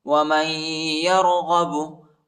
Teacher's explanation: ومن يرغب، میم کو یا کے ساتھ ملائیں گے، یا پر شد آیا ہے، نون نہیں پڑھا جاتا، نون کے اوپر جو ہے جزم ہے اور ادھر غنہ کریں گے